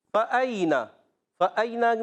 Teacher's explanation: فَأَيْنَ، فَأَيْنَ میں یا ساکن سے پہلے زبر ہے، یالین ہوگا، نرمی سے ادا کریں گے، نون پر زبر ہے، فَأَيْنَ یہاں نون کی زبر کو کھینچنا نہیں ہے